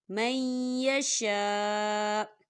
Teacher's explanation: دیکھیں آگے چھوٹی سی توئیں آ رہی ہے اور وقف کی صورت میں حمزہ جو ہے یہ ساکن ہو جائے گا، تو ہم اسے من یشاء نہیں پڑھیں گے.